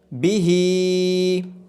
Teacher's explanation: با کے نیچے زیر ہے، اس کو لمبا نہیں کیا جائے گا۔ ہا کے نیچے کھڑی زیر ہونے کی وجہ سے ہا کو دو حرکات کے برابر لمبا کیا جائے گا